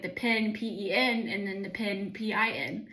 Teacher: And in many southern accents, like those two like words almost sound the exact same.